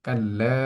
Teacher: লামের মধ্যে একালিফ পরিমাণ টেনে পড়ছি। এটার কারণ জবরের বাম পাশে খালি আলিফ এসেছে, যার কারণে একালিফ পরিমাণ টান হচ্ছে।